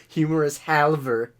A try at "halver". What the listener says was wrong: Halve? Yeah, but you don't pronounce the L.